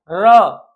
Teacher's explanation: लुंठित होकर, यानी जीभ हमारी ऊपर उठ होकर के मुड़ जा रही है, लुंठित हो जा रही है। · जिनके उच्चारण में जीभ तालु से लुढ़क कर स्पर्श करे लुंठित वर्ण कहते हैं। जैसे हम बोले तो र, तो र क्या हो रहा है?